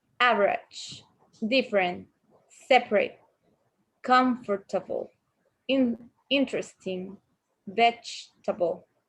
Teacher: The vowel immediately after a stressed syllable is sometimes not pronounced. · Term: Unpronounced vowels